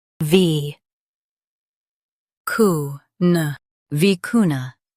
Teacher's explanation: Stress cu and keep na light.